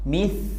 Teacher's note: Ini keliru karena huruf ta nggak punya sifat qalqalah. Huruf ta punya sifat rokhawah. Jadi saat sukun suaranya itu ngalir.